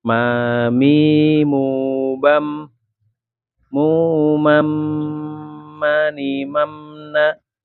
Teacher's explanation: Mim makhraj utamanya kedua bibir. Makhraj penyempurnanya atau pangkal hidung.